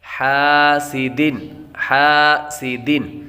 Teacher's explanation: سین حروف صفیریہ میں سے ہے اس لیے سیٹی کی آواز آئے گی